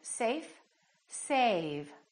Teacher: how A was longer with the V than with the F